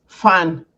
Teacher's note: my Nigerian people, the Hausas, the P, we call it F. Instead of pan, we call it fan.